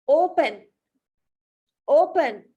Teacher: දැන් open කියද්දි stress වෙන්නේ e එක නෙමෙයි o එක. හැබැයි o එක තියෙන්නේ මුල නිසා අපිට එතනදී n එක double කරන්න අවශ්‍ය නැහැ.